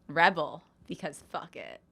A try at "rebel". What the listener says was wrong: Rebel. The wrong emphasis on the wrong syllable.